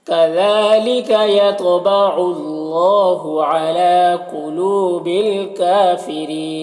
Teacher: اللہ کے لام سے پہلے عین کے اوپر پیش ہے تو اللہ کے لام کو پر پڑھیں گے، اور کھڑا زبر ہے جو الف مدہ کی طرح ہوتا ہے۔